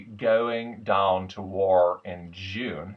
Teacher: the resonance uh for me is very very Broad in the back of the mouth